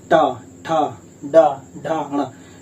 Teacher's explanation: आप टा की बात करते हैं, टा वर्ग की बात करते हैं, देखिए आप जाएंगे टा ठा डा ढा णा, ये जो आपका जीभ है वो तालु से आगे और दांत से थोड़ा पीछे यानी कि उसको मूर्धा बोलते हैं